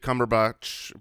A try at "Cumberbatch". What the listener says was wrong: Not that way with a lack of confidence towards the end. Cumberbatch.